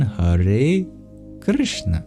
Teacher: the middle three sounds we make in the same place of articulation. We curl our tongue back. · The K is just a regular K, but the R is a vowel, a vocalic R. · There's technically no I in Krishna. It goes from a K, rolls directly into not just any N, but a retroflex N too. And then we roll into a sibilant, that's also retroflex.